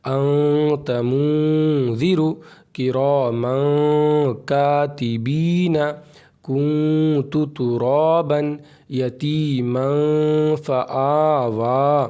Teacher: एक अलिफ के बराबर इख्फा करना पड़ेगा